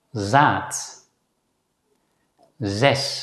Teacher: This is generally pronounced as a voiced consonant Z. It's the voiced counterpart of the voiceless Dutch consonant S.